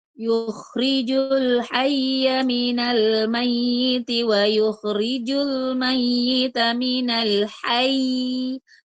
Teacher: Nah, hayy itu namanya nabar. Ya, diberi tekanan di situ.